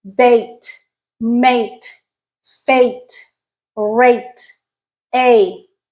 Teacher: so we're in the middle of our mouth in terms of tongue height now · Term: the A sound